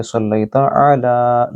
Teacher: صلیتا، لئی یا لین ہے، لمبا نہیں کریں گے۔ صلیتا علی، لام کے اوپر کھڑی زبر ہے، اس کو لمبا کریں